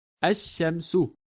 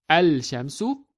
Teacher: we actually do not pronounce the letter lam of the prefix al. The lam assimilates into the next letter, which is shin. So we read it as ash-shamsu, not al-shamsu, but we read it as ash-shamsu.